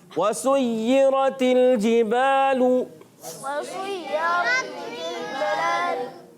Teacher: سین پر پیش ہے، اس پیش کو بھی ہم نے ہونٹوں کی گولائی سے ادا کرنا ہے